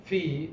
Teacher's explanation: from the point of your voicing it is voiceless there is no vibration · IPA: /f/